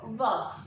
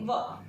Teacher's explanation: व होठ दांत पर जाकर लगेंगे, व, तो इसीलिए इसको दंत ओष्ठ के नाम से जाना जाता है।